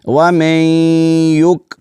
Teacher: اس نون کو ہم نے نہیں پڑھنا کیونکہ اس نون کا یا میں ادغام ہو چکا ہے۔